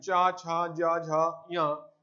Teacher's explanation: तालव्य जो तालु से बोले जाते हैं इन्हें बोलते हैं तालव्य